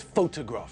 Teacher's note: the stress is on the first syllable just like in Hungarian